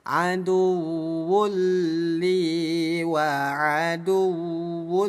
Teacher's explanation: Le singkatan lebur. Jadi bunyi dhammatain, bunyi tanwin kita leburkan ke huruf lam. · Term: idgham bila gunnah